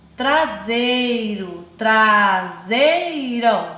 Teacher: o E e o I ficaram juntinhos em uma mesma sílaba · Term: Ditongo